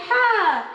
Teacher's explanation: হায়ের মাখরাজ মধ্য কণ্ঠনালী একটু চাপিয়ে বলবে হা।